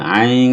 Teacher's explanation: kebanyakan para imam bacanya dengan NG atau condong-condong ke NG ya, ain seperti Imam Sudes tadi. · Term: ikhfa